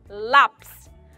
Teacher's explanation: Ela é considerada paroxítona, pois a sílaba tônica é a penúltima sílaba.